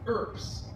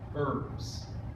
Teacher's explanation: Last of all, here's one we won't see too often, but when you have the letter B followed by an S, instead of making the sound that we would expect, the B sounds like a P, and the S makes its normal sound. So for instance, the word that means city in Latin is spelled this way with a BS at the end, but it is pronounced as ERPS, not herbs.